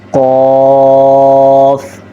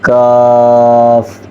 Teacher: اب دیکھیں ان دونوں کو ہی 4 الف کی مقدار کے برابر لمبا کر کے پڑھنا ہوتا ہے، اور دیکھیں کہ قاف کو موٹا کر کے پڑھنا ہے اور کاف کو باریک کر کے پڑھنا ہے، بس ان دونوں میں یہی فرق ہے۔